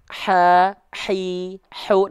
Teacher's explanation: lafalkan dengan karakteristik nafas yang berbisik